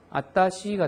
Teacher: 와타시가 어느 순간인가 발음을 생략을 하다 보니까 아따시가 돼버렸죠